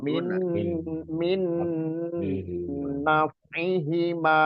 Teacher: Min-nya lebih diperjelas, bukan ikhfa, tapi idgham bi gunnah